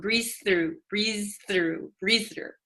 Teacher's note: The z and the th almost become one.